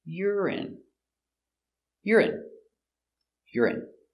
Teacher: urine stress on the first syllable